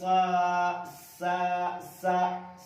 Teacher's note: सीन खड़ा जबर सा सीटी की आवाज निकलती है, ये भी हुरूफ सफीरिया में से।